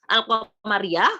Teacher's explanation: Ya, jadi lamnya, lam di sukunnya itu terdengar lam, terdengar al gitu ya.